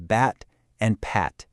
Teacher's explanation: The only difference is that tiny puff of air at the very beginning